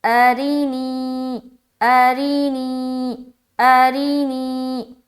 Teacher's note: ری را کے نیچے زیر کی حرکت ہے، زیر کو جلدی پڑھیں تھوڑا بھی نہ کھینچے، معروف پڑھیں مجہول آواز سے بچے، جیسے اری نی۔ یا ساکن سے پہلے زیر ہے، یا مدہ ہوگی، یا مدہ کو ایک الف کی مقدار کے باقدر کھینچ کر پڑھیں گے